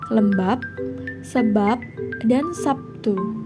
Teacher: adanya posisi B pada posisi akhir dalam kata lembab, sebab, Sabtu yang diucapkan dengan P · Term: netralisasi